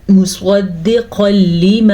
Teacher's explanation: تنوین کے بعد پھر سے لام آیا ہوا ہے, تو ہم ان کو آپس میں ملائیں گے, بغیر غننے کے ملائیں گے. ادغام بلا غنہ کا قاعدہ ہے یہ.